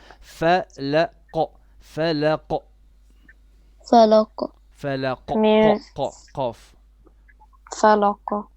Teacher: the qaf is heavy and has qalqala. فلق فلق قاف.